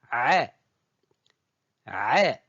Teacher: même point d'articulation elle n'existe ni en français ni en anglais elle se prononce au niveau du milieu de la gorge exactement au niveau de l'épiglote